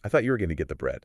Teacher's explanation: notice how bread Rises cuz I already mentioned it's old information